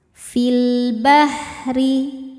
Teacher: Sebab alif lam menghadapi huruf qamariyah yaitu ba. Cara bacanya lam dibaca jelas. Fil bahri. Huruf ra dibaca secara tarqiq. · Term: alif lam qamariyah